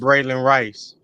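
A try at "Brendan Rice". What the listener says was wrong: There's no L in there.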